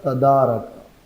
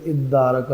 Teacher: ادارکا، یہ اصل میں تھا تدارکا، یہ جو تا ہے وہ پھر دال میں مدغم ہوئی ہے، اور شروع میں حمزہ لاتے ہیں ابتدا بالسکون محال ہونے کی وجہ سے، تو یہ تدارکا پھر ادارکا ہوا ہے۔